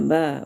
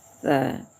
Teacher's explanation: Bertemu saja bibir atas dan bibir bawah. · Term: huruf ba